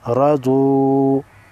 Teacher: ضاد حروف مستعلیہ میں سے ہے لہٰذا موٹا ادا ہوگا